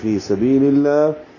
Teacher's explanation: فی سبیل اللہ، فی یا مدہ ہے، سبی میں بی یا مدہ ہے، اور للہ میں لام اس میں جلالہ کو باریک پڑھیں گے کیونکہ پیچھے لام کی نیچے زیر ہے